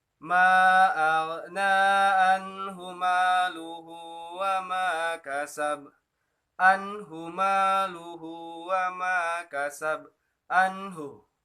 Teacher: pada huruf anhu ini dibacanya jelas karena di situ nun mati bertemu dengan huruf ha